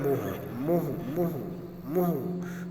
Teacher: तो मुँह अनुस्वार नहीं बल्कि अनुनासिक